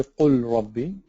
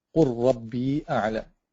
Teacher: You have to merge the two, the lam and ra, and then it becomes ra ash-shadda. Ra with the shadda. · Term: idgham